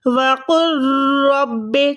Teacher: وَقُن رَبِّ ایسے نہیں پڑھیں گے، ڈائریکٹ قاف کو را سے ملائیں گے کیونکہ را جو ہے بغیر گننے والے ادغام میں آتی ہے